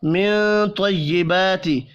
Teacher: نون ساکن کے بعد طا ہے, اخفاء حقیقی ہوگا